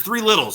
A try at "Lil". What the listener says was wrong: No, not Littles, 3 Lils. Not Little. Lil. You say Little. Lil.